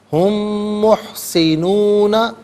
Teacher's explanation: ہم میں میم ساکن ہے، اسے محسنون کے میم کے ساتھ ملائیں گے، اور میم کی آواز کو غنّے کے ساتھ ادا کریں گے